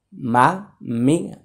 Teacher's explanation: দুই ঠোঁটের বাহিরের অংশ শুকনো জায়গা হচ্ছে মিম